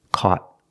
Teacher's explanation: Not caught, caught. Make a stop T. Put your tongue up and stop the air